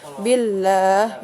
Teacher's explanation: Lafdu al-jalalah atau lafaz Allah itu diawali dengan huruf yang berharokat kasroh. Jadi dibacanya tipis ya. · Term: lam at-tarqiq